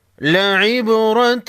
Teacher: فی ذالک، ان فی ذالک لعبرۃ لأولی الابصار، لعب با ساکن کو ہلا کر پڑھیں گے، را پر زبر ہے موٹا پڑھیں گے